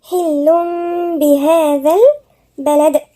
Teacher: احنا مش هننطق التنوين، هننطق الميم مع ايه؟ غنة. يعني احنا قلبنا التنوين ميم، حتى مكتوب فوق هنا ايه؟ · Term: اقلاب